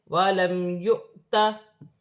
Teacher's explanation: رہی ہے، ہا حروف حلقی میں سے ہے، واو خالی ہے، حمزہ پر جزم کی حرکت ہے، جھٹکے کے ساتھ پڑھا جائے گا